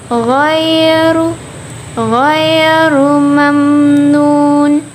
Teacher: Nah, itu di sana ada ro tafkim, yaitu ro yang berbaris dhammah, yang berbaris di atas, sehingga disebut dengan ro tafkim. Dibaca dengan tebal.